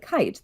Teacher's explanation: the mouth opens first like it does for that ah sound and then it goes to this much tighter sound with the jaw closed up and the teeth close together and the mouth is no longer open like an oh it's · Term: diphthong